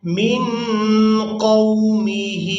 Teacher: میم کو نون ساکن کے ساتھ ملاتے ہوئے اخفا کے ساتھ ادا کریں گے، یعنی نون ساکن کی آواز کو ناک میں چھپائیں گے